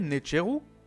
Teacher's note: le R se conserve car il n'est pas en fin de mot et devient Naturu